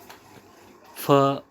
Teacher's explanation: ओष्ठ महाप्राण अघोष वर्ण